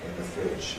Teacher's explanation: So I've given fridge a stress but no pitch prominence.